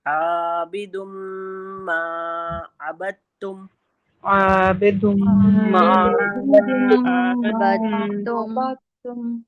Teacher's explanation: عابد پھر میم میں الف مدہ لگا ہوا ہے تو ہم اس کو بھی کھینچیں گے